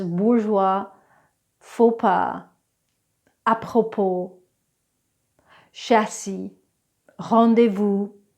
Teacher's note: There are some fancy silent Ss that we get from the French language